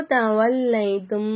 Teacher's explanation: மீமே சாகினை குன்னா செஞ்சு ஓதணும் · மீமே சாக்கின குன்னா செஞ்சு ஓதணும். அப்போ தவல்லைத்தும் அப்படின்னு ஓதணும்.